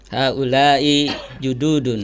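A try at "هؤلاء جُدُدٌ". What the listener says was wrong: Kita tadi di pembahasan pertama sudah menekankan ini du-nya panjang atau pendek. Betul-betul diulangi ini namanya jududun. Padahal kan pendek ya.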